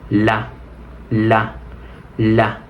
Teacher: la lengua está un poco más atrás de los dientes